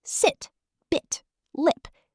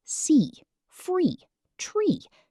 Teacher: Ship, short quick i sound, like sit, bit, lip. Sheep, long e sound, like see, free, tree.